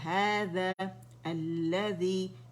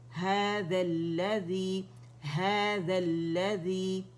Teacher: تو ہم نے الف کو ڈراپ کر دینا ہے پڑھنے میں